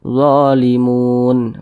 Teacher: panjangnya boleh dibaca Dua harakat atau kira-kira dua ketukan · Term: Mad Arid lukun